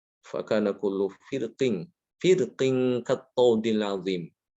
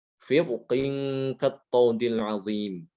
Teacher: boleh dibaca tipis, tarqiq, fakana kullu firqing kattaudil azim. Atau boleh dibaca dengan tafkhim, firqin kattaudil azim. · Tapi karena setelah ro ada huruf isti'la yaitu qaf, ya. Huruf qaf itu termasuk huruf yang isti'la ya, huruf yang tebal, dibaca tebal. Maka rohnya ikut tebal.